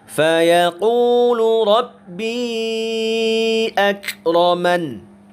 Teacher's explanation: Karena setelah mad ada hamzah yang berada tidak dalam satu kata, maka itulah yang disebut dengan mad jaiz munfasil. Maka kata rabbi kita baca panjangnya 4 harokat.